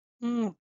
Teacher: This is a very slight n sound, which it's a nasal sound.